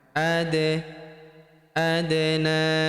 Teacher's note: huruf da berharakat sukun kita pantulkan atau kita qalqalahkan